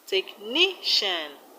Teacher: in technician, the stress is on ni.